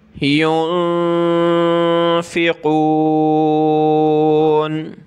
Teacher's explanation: یہاں نون ساکن پہ ہم نے ناک میں آواز پیدا کرنی ہے اور قاف کو موٹا کرنا ہے۔ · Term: اخفا